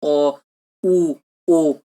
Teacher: দেখো দুটো ঠোঁটের নিম্ন, অধর, ওষ্ঠ দুটোই কিন্তু গোলাকার হচ্ছে। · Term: কুঞ্চিত স্বরধ্বনি